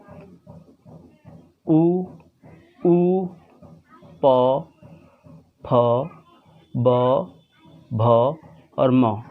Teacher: तो जब आप ओष्ठ कैटेगरी के शब्दों का, वर्णों का उच्चारण करेंगे तो उसमें आप देखेंगे कि आपके होंठ जो है वो एक दूसरे पे को आकर के मिल रहे हैं।